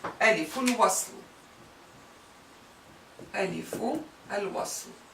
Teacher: The connecting Alif or Alif of connection or the joining Alif or the Alif that joins, you name it. It indicates that the Alif is not pronounced as a glottal stop, but that the word is connected to the previous word, like liaison in French.